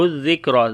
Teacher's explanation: زال کے اوپر جو ہے وہ نرمی کے ساتھ پڑھیں گے، صفت رخاوت ہوگی